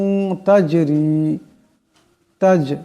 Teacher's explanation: এই জিম সাকিন আওয়ার সাথে একটি টক্কর খাবে যেহেতু জিম কলকলার হরফ